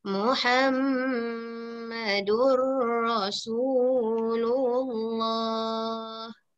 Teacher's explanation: mim untuk Muhammad tu harus didengungkan